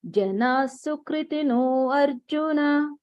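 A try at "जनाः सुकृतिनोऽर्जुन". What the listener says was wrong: Here Arjuna is there, but when you chant, you don't chant that.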